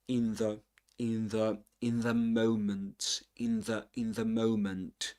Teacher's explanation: the final consonant in the word in gets dentalized because of the first consonant in the next word.